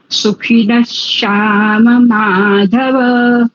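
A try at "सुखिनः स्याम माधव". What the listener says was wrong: હા, અને સકાર છે સરસ્વતી સ છે. શ્યામ નથી, શ્યામ નથી, શ્યામ.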